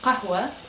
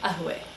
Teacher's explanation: A lot of times you will hear it changed to ahwe. So the qaf, the Q sounding letter, will change to a hamza, which is more of just a stop. So most people say ahwe.